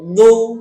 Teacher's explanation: দদ পেশ দু, দু দু, দয়রস্য, বাংলায় দয়রস্যর মতো দু, ঠোঁটটা গোল করে দু, আর দদ পেশ জিহ্বার পাশ দিয়ে দু